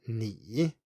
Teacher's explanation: in isolation or when you stress it heavily, it is a dipping tone. If I were to say you in Chinese, it's ni with a dipping tone ni.